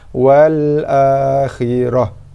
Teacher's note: Wal akhirati asalnya, bila kita wakaf pada ta marbutah dibaca dengan ha sukun, ha sakinah. Wal akhirah, wakaf kili.